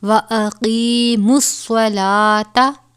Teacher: صاد کو پر ادا کیا جائے گا کیونکہ یہ حروف مستعلیہ میں سے ہے. لام کے اوپر کھڑا زبر ہے، کھڑا زبر کو ایک الف کے برابر پڑھتے ہیں · کاف کے اوپر کھڑا زبر ہے، ایک الف کے برابر پڑھیں گے